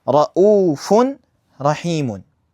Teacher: it's basically just like merging the noon into the raw or the tanween into the raw